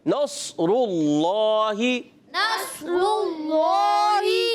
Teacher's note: اللہ, good, یہ موٹا کرنا ہے, نصر اللہ. نصر اللہ, صاد بھی موٹا, را بھی موٹا اور اللہ پاک کا لام بھی موٹا